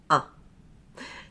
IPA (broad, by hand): ʌ